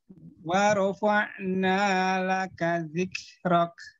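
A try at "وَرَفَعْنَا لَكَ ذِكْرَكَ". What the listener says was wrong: Udah keluar hamesnya. Nanti tinggal kadar hamesnya sedikit dikurangin. Ya, jangan terlalu banyak. Karena kaf dia memiliki sifat syiddah. Syiddah itu artinya suaranya menekan. Sedikit kadarnya. Jadi cuma bukan ditekan begitu. Ya, kadarnya. Tapi ngeluarin hamzah sudah baik.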